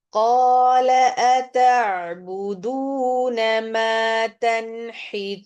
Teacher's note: تنحتون میں نون ساکن کے بعد حروف حلقی ہے تو ہم اخفا نہیں کریں گے